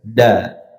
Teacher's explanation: Ujung lidah menyentuh langit-langit atau belakang gigi seri. Jangan langit-langit tengah. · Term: huruf dal